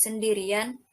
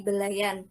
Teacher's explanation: munculnya bunyi peluncur y